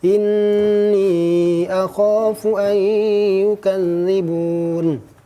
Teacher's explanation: Dengung adalah suara yang keluar dari pangkal tenggorokan, pangkal rongga hidung. Suara yang keluar dari pangkal rongga hidung. · Jadi ini huruf nun bertasydid dibaca dengan dengung. Dengung adalah suara yang keluar dari pangkal tenggorokan, pangkal rongga hidung.